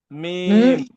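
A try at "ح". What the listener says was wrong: এটা মিম হবে না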